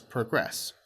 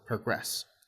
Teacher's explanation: When it's a noun, it's progress with stress on the first syllable. But when it's a verb, it's often pronounced as progress, which is a stress on the last syllable, progress. Notice progress and progress, noun and verb. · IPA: /prəˈɡrɛs/